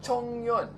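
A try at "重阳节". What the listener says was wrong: Not Yong. Chongyang Festival. not Zhongyang. Zhongyang is different. not Zhongyang. Chongyang.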